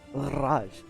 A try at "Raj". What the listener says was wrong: Do not roll your R's, but